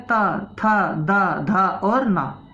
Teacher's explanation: था, दा, धा, ना, बोलकर देखो जीभ कहाँ पर आके लग रही है? दांतों पर। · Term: दंतव्य